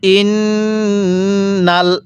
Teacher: এই যে আমরা নুনের মধ্যে গুন্নাহ করব, কারণ মিমে নুনে তাসদিদ গুন্নাহ করা ওয়াজিব। মিম এবং নুনের উপর এরকম তাসদিদ চিহ্ন হলে সেখানে আমাদের অবশ্যই গুন্নাহ করে পড়তে হবে।